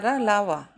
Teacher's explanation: इनके उच्चारण में जीभ मुख के किसी विशेष भाग से के निकट से आती है, किंतु उसे स्पष्ट नहीं करती है, और ये ना तो स्वर होते हैं और ना व्यंजन। ये स्वर व्यंजन के बीच की ध्वनियाँ हैं, इन्हें अंतस्थ व्यंजन कहते हैं।